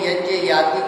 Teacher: यज्ञ याति के य का भी उच्चारण तालु से होता है